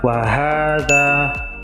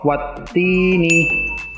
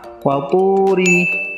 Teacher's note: Mad tabi'i dibaca panjang 2 harokat atau 1 alif, atau dalam bahasa kalian 2 ketukan.